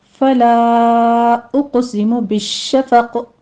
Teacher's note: फला में मद्दे मुनफसिल जायज़ है, 4 काउंट करना है। उक़सिमु में क़ाफ के ऊपर कलकला भी है और क़ाफ को पुर भी पढ़ा जाएगा।